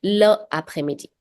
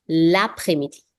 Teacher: the L sound from le and la is now going to be linked with the word. So you won't say le après-midi. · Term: L apostrophe